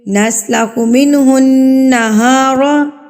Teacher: नून मुशदत पर भी गुनाह किया जाता है। यानी कि नाक में आवाज को रोका जाएगा।